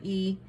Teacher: ایک کاؤنٹ کے لیے آواز نیچے جائے گی, اور زبان کا درمیانی حصہ تھوڑا ریز کریں گے تو خوبصورتی سے کسرہ ادا ہوگی